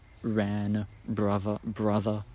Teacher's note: I think, labiodental approximant instead of the normal r sound, the normal alveolar approximant.